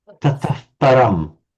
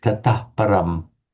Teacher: in Vedic, this would take on a bit of the color of the p. So it would be pronounced like tataf, almost like a f sound